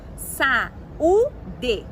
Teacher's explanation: Quando eu faço a divisão silábica, fica como sa-u-de. Então, o U ficou formando sílaba sozinho, eu digo que ele é um hiato